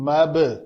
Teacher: مبتلا، الف کو مدہ نہیں کیا، میم زبر با ساکن مب، تو با کو قلقلہ کیا کیونکہ حروف قطب قلقلہ قطب و جدن میں سے ہے، تو یہاں پہ ہم نے قلقلہ کیا۔